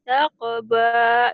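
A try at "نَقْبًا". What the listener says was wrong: Ini bukan takba, nakba ya, titiknya satu.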